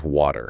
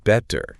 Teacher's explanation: Instead of stopping completely to build up air pressure, the tongue just surfs the wave of vocal cord vibration, quickly taps the roof of the mouth, and bounces off. Because the vocal cords never stop vibrating, that T physically morphs into a soft, fast D sound.